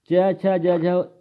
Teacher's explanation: च छ ज झ यह क्या होती है तालव्य ध्वनियां होती है